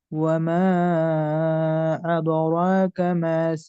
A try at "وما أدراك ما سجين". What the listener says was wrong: ভাই আদো আদো হবে না, এটা মার্ক করেন, আদো না। আদো হইলে দাল মোটা হয়ে যায়। এদে র, ঠিক আছে। ওয়ামা আদরাকা, এদে রাকা।